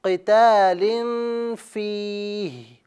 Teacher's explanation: ہا کے نیچے زیر کو نہیں پڑھا جائے گا، صرف ہا کا ساؤنڈ نکالا جائے گا